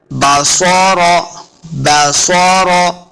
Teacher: स्वाद और रा दोनों को मोटा पढ़ना है, रा ऊपर पढ़ा जाएगा।